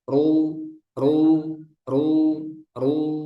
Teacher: Harus tebal ru. Mencucunya sempurna tapi pangkal lidahnya juga naik.